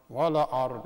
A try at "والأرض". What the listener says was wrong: لا, not ولا. Because ولا, you know, you just put فتحة on top of the lam. Look at it. The lam has سكون, right? So you will say, والأرض.